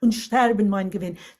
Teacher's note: it puts the stress on sterben on the downbeat